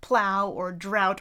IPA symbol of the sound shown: aʊ